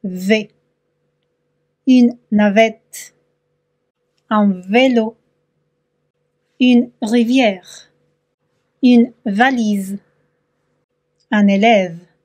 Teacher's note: les dents supérieures touche de lèvre inférieure pour produire le son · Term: labiodentale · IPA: /v/